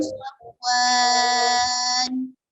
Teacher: اگر آپ نے صفوان پر وقفہ کرنا ہے تو 4 الف تک اس کو بڑھا سکتے ہیں، یعنی کہ اس طرح پڑھیں گے وقفے کی صورت میں، مثل صفوان.